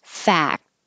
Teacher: You don't have to say the K, but your tongue goes to the K position, fact, to stop the airflow.